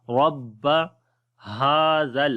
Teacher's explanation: با کے اوپر جو ہے وہ شد آ گئی ہے، تھوڑی سی جماؤ والی آواز آئے گی ، رب ہاذل، ہا کو لمبا کریں گے، کھڑی زبر ہے